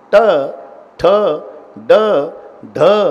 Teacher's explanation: जीभ वाकडी होऊन वरच्या टाळूला स्पर्श करते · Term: तालव्य